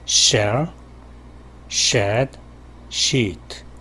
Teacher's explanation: 상당히 광범위하고 좀 마찰의 면적이 길고 넓다 · 실제 마찰이 일어나는 부분은 혓날이라고 할 수 있는데요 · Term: SH 소리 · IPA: /ʃ/